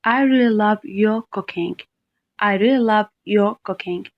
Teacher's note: i stress you because i want to emphasize that i especially like your cooking rather than anyone else's here's another example i like what you're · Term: stressed